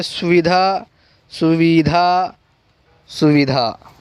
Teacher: सुविधा में हम जो उकार है वो कम खींच रहे हैं, तो कम खींचने वाला जो उकार है वो है रस्व उकार, जो कि ये है।